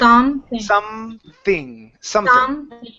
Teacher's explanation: Good. Yeah, so lips come together, then into the TH